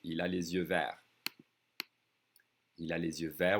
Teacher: I'm connecting that S with the vowel sound, with the Z sound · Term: liaison